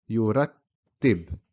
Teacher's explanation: Here our letter of focus is the ta, has a shadda with a kasra, yurattib. You hear the ta being pronounced twice